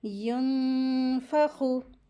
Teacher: ख heavy letter है, इसको पढ़ते वक्त आवाज़ को हैवी करेंगे